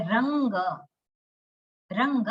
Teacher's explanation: પણ સંસ્કૃતમાં રંગ લખીએ એમાં ર લખીએ, પણ પછી અનુનાસિક જે છે એ ક વર્ગનો છે. ક વર્ગનો જે અનુનાસિક છે, જે છેલ્લો, જે નેઝલ જે આપણે કહીએ છીએ, એ ગ, ક, ખ, ગ, ઘ અને એના પછીનો જે છે એ ङ.